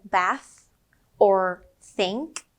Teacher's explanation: right here but when it's quiet like in bath or think there is no buzz it's just a soft air flow coming out of your mouth